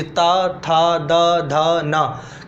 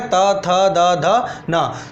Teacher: दंत की बात करें तो क्या होता है? जीभ दांतों को टच करती है।